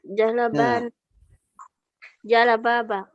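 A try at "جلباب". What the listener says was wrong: Jilbab. Jilbab bukan jalabab. Jilbab.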